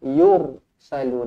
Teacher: Yursalu, ra dibaca tebal kerana sebelum dia berbaris depan.